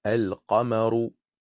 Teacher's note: Pour les lettres lunaires, on prononcera le lam. On dira par exemple al-qamaru.